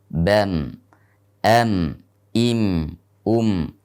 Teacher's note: Ketika dalam keadaan sukun, maka ada suara yang mengalir di hidung. Itulah yang disebut dengan gunnah.